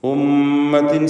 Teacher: ഉമ്മത്തിൻ ഷദ്ദുള്ള മീമിനെ മണിക്കുക, മീം മുഷദ്ദദ.